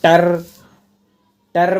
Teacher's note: टर कंपन होता है ना जुबान में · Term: प्रकंपित